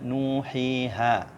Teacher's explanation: Kemudian awai 2 harokat, ini adalah huruf mad tabi'i ya, yang panjangnya 2 harokat. Contohnya nuhiha.